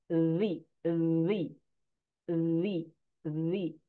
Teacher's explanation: huruf za keluarnya dari ujung lidah dengan ujung gigi atas. Ujung lidah dengan ujung gigi seri atas.